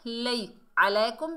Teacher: आइन ज़बर आ, लाम या ज़बर लई, अलैकुम भी आपने नहीं पढ़ना, ये या लीन है, नरमी से अदा होगा।